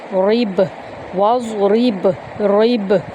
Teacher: وَاضْرِبْ لَهُمْ، واو کو ہم ضاد کے اندر داخل کریں گے اور پر پڑھیں گے، را کو با میں داخل کریں گے اور قلقلہ کریں گے